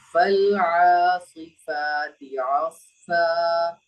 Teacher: فل میں قلقلہ نہیں ہوگا